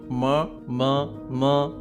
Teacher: प फ ब भ म जो ओष्ठ्य व्यंजन हैं, इनके उच्चारण में जीवा का प्रयोग नहीं है।